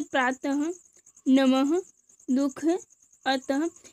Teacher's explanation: विसर्ग का उच्चारण करते समय हमारे मुख से हा व्यंजन की ध्वनियाँ निकलती हैं, जैसे प्रातः, नमः, दुख, अतः।